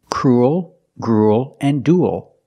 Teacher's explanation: They all have the ooh sound plus a dark l. Like pool and cool.